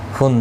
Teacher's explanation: تنوین کے بعد حروف حلقی کا آئینہ ہے، اظہار حلقی ہوگا، گنہ نہیں کریں گے